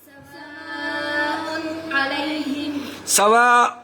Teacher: ادھر نون کا اظہار کرنا پڑے گا. حالانکہ تنوین کے اندر نون اکفا ہے مگر عین کے آ جانے سے، حرف حلقی کے آ جانے سے یہ اس کا اظہار کرنا پڑے گا